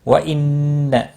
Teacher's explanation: نون مشدد پر غنہ ہوگا، ہا الف مدہ ہے، ایک الف کے برابر کھینچ کر پڑھیں گے۔